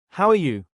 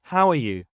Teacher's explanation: how are you? Rises slightly at the end